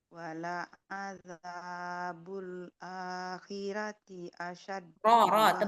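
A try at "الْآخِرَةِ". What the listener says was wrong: Tebalin ronya. Tebalin ronya. Wala azabul akhirati, jangan khirati. Jangan gitu. Jadi kalau ro dalam keadaan fathah itu ya Mbak dia harus dibaca tebal. Akhirati.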